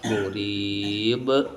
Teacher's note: istilah tajwidnya qolqalah dan murid karena dibaca wakaf walaupun aslinya mibin muribin tapi karena waqaf maka ba menjadi sukun karena sukun maka menjadi qalqalah · Ada huruf yang dibaca ngeper dibaca mantul yaitu huruf ba. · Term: qalqalah kubra